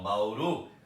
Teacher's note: Para eu descobrir, eu coloco um acento imaginário, eu não vou falar bauru, então eu falo bauru, eu coloco um acento, né, simbólico para descobrir onde é a tônica. Então, bauru, a tônica é o ru. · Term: sílaba tônica